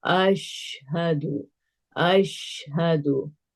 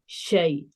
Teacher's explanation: जब शीन अदा हो रहा है तो पूरे मुंह में जब आवाज जो है ना, पूरे मखरज इसमें फैल जाएगा, हर तरफ से फैल के निकलेगा, और इसको हम ब्लॉक नहीं करेंगे। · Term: शीन की साउंड